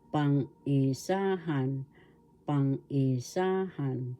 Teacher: the accent is in Third syllable · First syllable pang, second syllable i, third syllable sa, fourth syllable han. The accent is in the third syllable